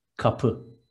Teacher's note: Two short syllables and stress is on the second.